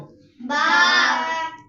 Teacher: با ادا ہوتا ہے دونوں ہونٹوں کو ملانے سے